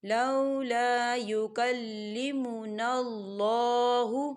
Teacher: خالی الف سے پہلے زبر ہے، الف مدہ ہو رہا ہے تو دو حرکت کے برابر کھینچیں گے